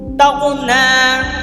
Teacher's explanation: غین جو ہے حروف مستعلیہ میں سے ہیں، اسے آپ پر کر کر پڑھیں گے